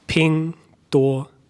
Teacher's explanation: Okay, so it's all the first tone.